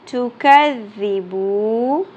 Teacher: با واو پیش بو، ایک الف کے برابر کھینچنا ہے.